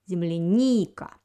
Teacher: The first letter E and the second letter ya, the second vowel, they don't have an accent. The accent falls on the third vowel in this word. It's letter E.